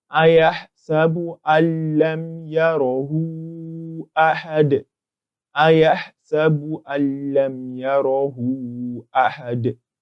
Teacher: Because lam is a letter of al-idgham bighayri gunnah, we insert the Nuun into the lam without pronouncing any gunnah